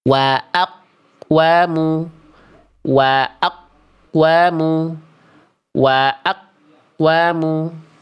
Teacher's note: Karena gema tidak tertahan, atau lebih tepatnya, tidak ada gema sama sekali; tidak ada qalqalah.